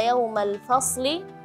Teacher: fa tipis bergandeng dengan shad yang tebal. Jadi jangan sampai ke bawah fasli, fasli.